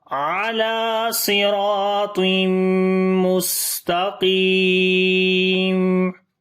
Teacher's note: میم کی آواز کو ہلکا سا کنٹینیو کریں گے صفت توسط کی وجہ سے